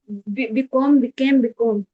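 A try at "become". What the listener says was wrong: अच्छा, इसको बिकॉम मत पढ़ना बेटी, बिकम पढ़ना उसको, ठीक है।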